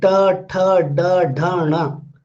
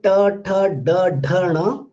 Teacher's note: When you say ta, tha, da, dha, na, all these sounds are retroflex sound, because when you pronounce this, you can find that the tip of the tongue is little bent